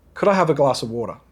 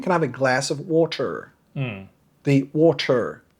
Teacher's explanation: So the R's and T's are very soft, if not pronounced at all. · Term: non-rhotic